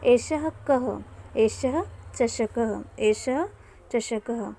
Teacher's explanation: एष लिखा है, इसको हम यदि विसर्ग के साथ पढ़ेंगे तो ह भी आ जाएगा